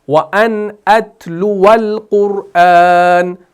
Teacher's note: वाव और आगे लाम साकिन को मिलाते हैं